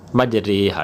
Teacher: امالہ کی را کو اردو کے لفظ قطرے کی را کی طرح پڑھیں گے، یعنی ری نہیں بلکہ رے پڑھیں گے